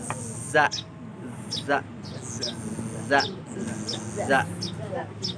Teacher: ujung lidahnya menempel ke gigi seri bawah